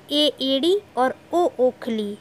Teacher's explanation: अर्ध संवृत स्वर के उच्चारण में मुख द्वार कम सकरा होता है।